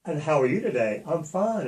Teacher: because you went up at the end of your word